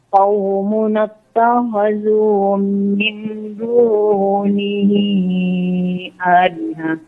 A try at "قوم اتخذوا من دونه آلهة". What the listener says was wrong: Alihah. A-nya panjang.